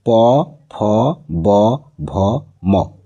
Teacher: দেখো দুই ঠোটের সাথে স্পর্শ হচ্ছে। আর দুই ঠোট স্পর্শ ছাড়া প ফ উচ্চারণ করতে পারবে না।